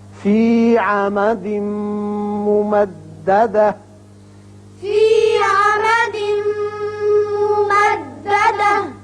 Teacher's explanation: فی عمد تنوین کے بعد میم ہے، ادغام غننے کے ساتھ ہوگا